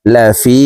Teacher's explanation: লাম জবর লা, ফা ইয়া জের ফি, জেরের বাম পাশে জজমওয়ালা ইয়া মদের হরফ, ডান দিকের হরকতকে এক আলিফ টানিয়া পড়িতে হয়। তো এই ফা জজমওয়ালা ইয়ার সাথে এক আলিফ টানি পড়ব